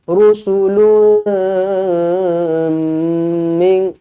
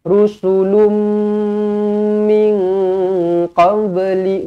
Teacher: Dengungkan 2 harakat bertemu dengan huruf mim, terus rapatkan bibir. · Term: idgham ma'al ghunnah